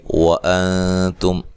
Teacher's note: حمزہ کو تحقیق سے، نون ساکن کا اخفا مع الغنہ ہے، باریک اخفا ہے، تا کو باریک پڑھنا ہے، یہاں میم ساکن کا اظہار ہے، ٹھیک ہے۔